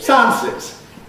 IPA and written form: ˈsaənsɪz (Sciences)